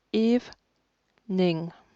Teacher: le e du milieu est muet ce qui fait qu'au final on entend que deux syllabes